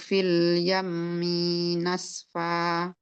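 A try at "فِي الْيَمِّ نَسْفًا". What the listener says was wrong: Minya jangan panjang.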